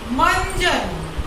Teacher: हवा नाक को पहले स्पर्श कर रही है और तुरंत मुंह से बाहर आ रही है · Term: अनुस्वार